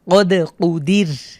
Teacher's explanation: এখানে রর উপরে সুকুন হচ্ছে ওয়াকফের কারণে, আর রর পূর্বের হরফে দালের নিচে জের রয়েছে, আমরা এই কারণে রটাকে পাতলা করে পড়ব